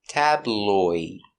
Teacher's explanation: it's a light L the tongue's in the front